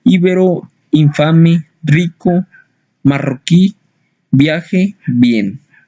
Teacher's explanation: Letra I. La letra I representa el fonema vocálico cerrado y anterior, cualquiera que sea la posición que tenga la palabra inicial, media o final, ya formando sílabas por sí misma, ya acompañado de consonante o formando parte del diptongo.